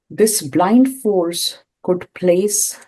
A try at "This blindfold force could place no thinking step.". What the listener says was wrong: No, it's a blindfold. it's not blind, but it's blindfolded.